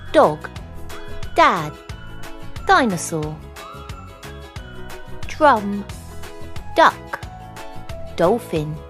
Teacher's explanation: The dah sound is a voice alveolar plosive consonant produced by touching the tongue to the upper gum, holding the air for a moment, and then releasing it quickly while vibrating the vocal cords.